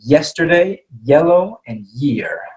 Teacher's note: So if you notice when I say Y, the kind of the back of my tongue is touching the top of my mouth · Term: Y sound